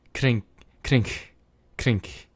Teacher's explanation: It's sort of like a breathy k.